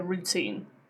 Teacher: routine does not have a glottal T because teen is stressed, okay? When it's a stressed syllable, we don't put a glottal T.